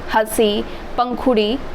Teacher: उच्चारण करते समय हवा नाक और मुँह दोनों से निकलती हो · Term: अनुनासिक